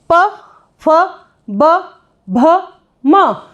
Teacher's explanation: आपने देखा ओष्ठों का आपस में स्पर्श करना, और इसीलिए इनका जो उच्चारण स्थान है वो रहेगा ओष्ठ है। अब आप इन पांचों जो वर्ग हैं जिसमें हमने देखा कि कहीं ना कहीं जो स्पर्श होकर जो आपके उच्चारण हैं वो आपके उच्चारित हो रहे हैं, तो इसलिए इन्हें स्पर्श व्यंजन कहते हैं।